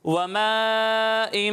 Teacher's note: یہاں مد متصل ہو رہا ہے, تو اسے 2 یا 2.5 الف کے برابر کھینچیں گے